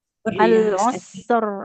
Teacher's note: rnya tebal harus mengalir juga suaranya